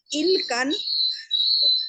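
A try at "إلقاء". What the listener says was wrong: इल्काम, हमजा भी है ना, इल्काम, हाँ डालना,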